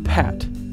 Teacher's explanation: you should feel a puff of air after the pee in Pat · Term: aspirated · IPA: [pʰ]